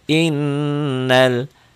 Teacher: Halaman 13 cara bacanya karena ada tasjid dibacanya dobel dobel nyamber dengung dan dengung ke hidungnya dan ditahan